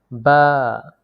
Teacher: দুই ঠোঁটের ভেজা জায়গা হইতে উচ্চারিত হয়